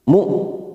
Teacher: di sini ada hamzah sukun ya, jangan samakan dengan ain